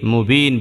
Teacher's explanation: এখানে মদের হরফের পরের হরফে দম ফেলছে, এই জন্য তিন আলিফ টান হচ্ছে, আরজি হয়ে গেছে